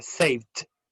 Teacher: El verbo save es un sonido F al final. Y la F, sonido F no vibra. Por lo tanto, cae en esta categoría y sería saved.